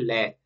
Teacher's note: दोनों तरफ से हवा निकलती है, तो वो होता है ले, ले को हम बोलते हैं तो दोनों तरफ दोनों जबड़ों के पास अक्षर से होकर के हवा निकलती है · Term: पार्श्विक व्यंजन